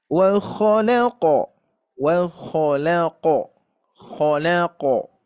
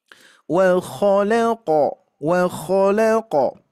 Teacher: tapi qo qo ya berasal dari eh pangkal lidah kita ya karena huruf q ini tebal pangkal lidah kita mengangkat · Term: sifat memantul